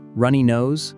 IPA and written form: ˈrʌn.i noʊz (Runny nose)